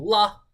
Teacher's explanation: when you say la you're not releasing any air out of your nasal cavity